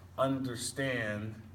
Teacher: two unstressed syllables followed by one stressed syllable